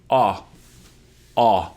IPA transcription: ɑ